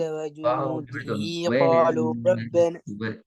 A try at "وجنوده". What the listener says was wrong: வாவை கொஞ்சம் விட்டு வருங்க வாவோட சவுண்ட் கொஞ்சம் மாறின மாதிரி இருந்துச்சு.